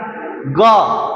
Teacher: स्वास वायु कम निकलता है और अंत में हकार की ध्वनि भी नहीं निकलती है। जैसे क नहीं निकला ना ग अंत में हकार की ध्वनि नहीं निकला। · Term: अल्पप्राण